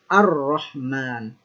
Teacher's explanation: Ini termasuk ke dalam ta'rif asyamsiyah. Jadi lamnya tidak dibaca, langsung dimasukkan ke huruf setelahnya yaitu ra. Ar-Rahman. Jadi lamnya digugurkan atau tidak dibaca.